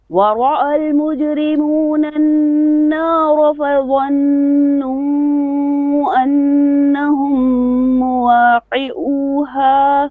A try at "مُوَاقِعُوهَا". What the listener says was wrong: You missed your ayn, it's not clear.